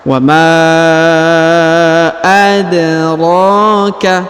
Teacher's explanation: huruf da berharakat sukun karena dia berharakat sukun maka kita pantulkan ya atau kita qalqalahkan · huruf ro dipanjangkan dua harakat karena di atasnya terdapat Alif kecil